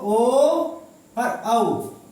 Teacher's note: और देखो ओ और औ, ओ ओष्ठ प्लस कंठ, ओ औ ये हमारे ओष्ठ प्लस कंठ बोल, इन दोनों से बोले जाते हैं